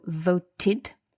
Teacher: this word voted, we've got the dental consonant T